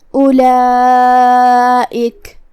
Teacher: آواز مد واجب متصل میں 4 مد کے برابر لمبی کریں گے